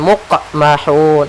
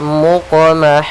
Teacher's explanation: Yaitu suara qafnya memantul tapi tidak ada tambahan huruf hamzah. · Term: qalqalah